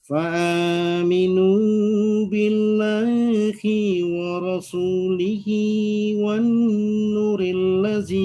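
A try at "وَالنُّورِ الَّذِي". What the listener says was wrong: Wan nu mat tabi'i juga.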